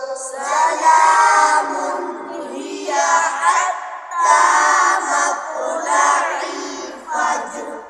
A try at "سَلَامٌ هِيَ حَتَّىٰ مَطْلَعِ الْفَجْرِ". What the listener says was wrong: حتی یہاں تا ہے، مطلع یہاں طا ہے، طا کے ساتھ عین ہے. سمجھ آئی نا؟ دوبارہ دیکھ لو. سلام یہاں سین ہے. سلام ہی حتی مطلع الفجر.